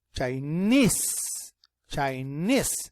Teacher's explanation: and the stress is in the second syllable